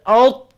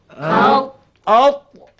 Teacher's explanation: lidah, satu juzuk padanya dia terangkat ke langit keras atas